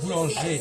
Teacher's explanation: Donc dans boulanger, on n'entend pas le R. C'est ça. On n'entend pas exactement le R.